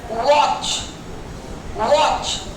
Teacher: व को बोलने का तरीका अलग है, वो तो छूता ही नहीं है, केवल लिप्स हमारे राउंड हो जाते हैं।